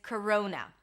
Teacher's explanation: We start with a k sound, then it's a schwa, k, ro, o as in go, coro, and then n, corona.